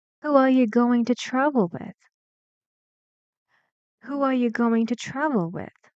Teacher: So it's a WH question and we need falling intonation.